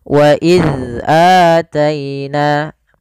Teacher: Maka huruf dzal itu tidak boleh ada nafas yang dikeluarkan. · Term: sifat jahar